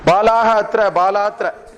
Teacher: The Visarga is gone. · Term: Lopa